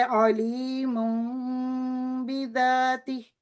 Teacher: تنوین کی آواز کو میم میں بدل دیا اور غنہ کیا اور 2 سیکنڈ لگائے۔